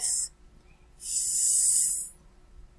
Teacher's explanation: produce the sound of f we do not feel any vibration so it is called voiceless sound